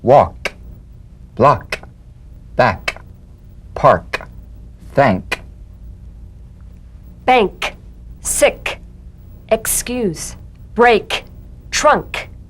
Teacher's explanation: The unvoiced tongue back plosive consonant. With the tongue in the G position, let the tongue spring away in the soft, unvoiced click of the K drum beat.